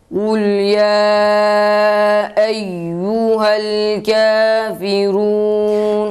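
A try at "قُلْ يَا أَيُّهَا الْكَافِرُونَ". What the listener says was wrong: Şu dikkat ediyoruz, yayı uzatmıyoruz. Kul ya eyyuhel.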